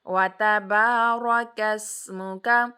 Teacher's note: کاف کو سین کے ساتھ مرج کیا اور سین کی آواز کو اس کے مخرج میں ہی روک دیا۔ جتنے بھی ساکن لیٹرز ہوتے ہیں نا ان کو ہلانا نہیں ہوتا سوائے حروف قلقلہ کے۔